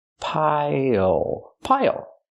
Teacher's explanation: use the dark L at the end it changes the vowel